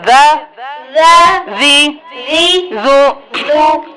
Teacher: अब ये नरमी से अदा होगा, ज़ा नहीं करेंगे, ज़ा करेंगे, क्योंकि ये बताया था कि ये नरम हरूफ में से है। ऊपर नीचे के दांतों के दरमियान जुबान रखकर अदा करेंगे।